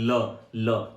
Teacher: जिस भी व्यंजन के उच्चारण में उष्मा बगल से निकलती हो उसे ही हम लोग क्या कहते हैं पार्श्विक व्यंजन कहते हैं